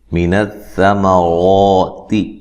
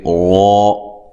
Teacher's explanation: سا کو نرم ادا کرنا ہے، میم کو موٹا نہیں کرنا، لمبا نہیں کرنا، زبر زیر پیش کو لمبا نہیں کیا جاتا، یاد رکھیے۔